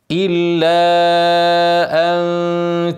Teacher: الا ان ها مد ايه منفصل هنمد توسط اربع حركات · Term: مد منفصل